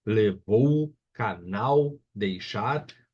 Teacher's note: palavra cuja sílaba tônica, sílaba mais forte, é a última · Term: oxítona